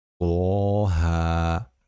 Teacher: Misol, Toha surasining birinchi oyatida to va haflari o'zaroq birikgan. Biz bu ikkisini ham ikki harakatdan chozib haa deb o'qiymiz